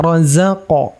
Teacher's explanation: Qalqalah itu pantulannya mengikuti sifat yang ada pada huruf tersebut Q di sini termasuk huruf tebal ya maka ketika kita baca Ya harus kita tebalkan qnya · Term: qaf qalqalah